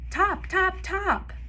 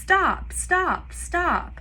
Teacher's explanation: both of the consonants so for example for the word stop that s t in the beginning of the word might be simplified to top so they might say top top top first stop stop stop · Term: cluster reduction